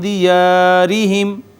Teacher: را کے نیچے زیر، ہم نے باریک کر کے اس کو پڑھنا ہے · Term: مرقق